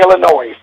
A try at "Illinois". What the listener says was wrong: No, it's not. No, the S is silent, man.